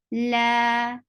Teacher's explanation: la is two counts long vowel